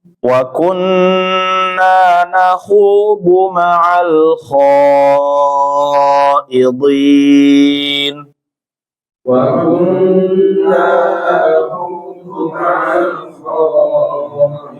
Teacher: nunnya nun bertasydid ditahan terlebih dahulu ya